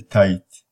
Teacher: T is voiceless, alveolar, stop, because the tongue tip contacts the alveolar ridge.